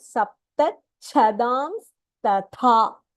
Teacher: So the cha and the last th is Mahapranaha there.